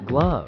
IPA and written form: ɡlʌv (glove)